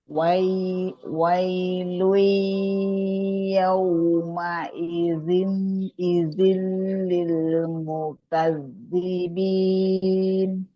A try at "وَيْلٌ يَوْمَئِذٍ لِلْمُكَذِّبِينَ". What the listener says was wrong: Mohon maaf, saya masih mendengar ada N-nya ya. Oke, pastikan jangan masuk hidung. Langsung ke L. Yauma idzil lil.